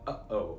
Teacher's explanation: back of your throat closes quickly and then opens again uh-oh it stops the air and then lets it out again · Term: glottal stop